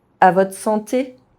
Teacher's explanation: The French R is often dropped when found in a consonant cluster and followed by E at the end of a word, as in words ending in TRE, VRE.